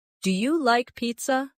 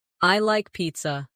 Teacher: Let your voice fall gently at the end. · Make sure your voice rises at the end.